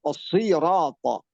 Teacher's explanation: Nah, yang terakhir paling ringan ketebalannya. Kalau baris bawah, sirata, tetap tabkhim, cuma paling tipis ketabkhimannya kalau dibandingkan dengan 4 sebelumnya.